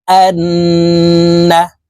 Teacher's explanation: নুনের সাথে নাকের পাশে থেকে গুন্না করে পড়বো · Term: ওয়াজিব গুন্নাহ